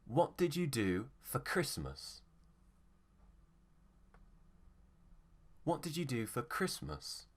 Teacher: it's an open question so the tone will go down on the last word on the unstressed syllable